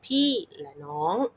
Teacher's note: โดยมากจะเน้นคำว่าพี่กับน้องแต่ว่าไม่เน้นที่และ นะคะพี่และน้องประมาณนี้นะคะพี่และน้องนะคะหรือกลุ่มคำต่อมานะคะเนาะประโยคต่อมาประโยคต่อมาที่บอกว่าไปกับใครนะคะก็